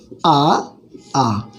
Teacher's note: आ का जो उच्चारण स्थान है वो कंठ से है।